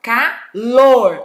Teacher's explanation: Ó a sílaba forte, que é a última